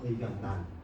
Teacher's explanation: 리을 비음화가 일어나는 거죠. 그래서 의견난이 되어요.